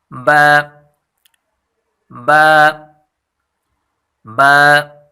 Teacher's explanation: ہونٹوں کا بھی وہ حصہ جو تر ہوتا ہے، یعنی ہونٹوں کا ایک حصہ خشک ہوتا ہے اور دوسرا تر حصہ ہوتا ہے یعنی گیلا ہوتا ہے۔ با کو تر والے حصے سے یعنی گیلے حصے سے ادا کیا جاتا ہے۔